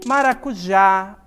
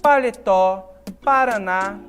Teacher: palavras que são oxítonas em que a sílaba tônica tá no final é a última sílaba